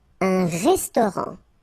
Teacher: Final T not pronounced.